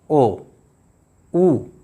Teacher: मतलब इन जो वर्तुल वर्ण हैं उनको बोलने में हमारे ओष्ठ वृत्ताकार जैसे हो जाते हैं, गोल जैसे हो जाते हैं